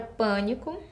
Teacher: Tem a palavra pânico, onde a sílaba forte está no início e é um som fechado. Então, eu utilizo o acento circunflexo.